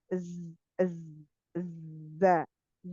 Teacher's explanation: Makrotnya ini satu makrot dengan sin dan sod ya. Ujung lidah hampir bertemu dengan gigi seri atas dan bawah itu ya. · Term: sofir